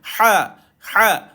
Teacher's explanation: ha ha betul-betul dekat kita punya halkum tu tuan-tuan